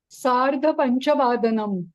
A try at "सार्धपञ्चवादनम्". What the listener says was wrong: उत्तमम्।